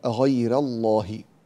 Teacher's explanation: هنا الراء المفتوحة وقبلها ياء ساكنة عند ورش ترقق، لكن ترقيقها هنا يصادف تفخيم اللام بعدها، فجاء مرقق ثم مفخم، فلا بد أن تنتبه إلى تخليص هذا من بعضه. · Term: ترقيق الراء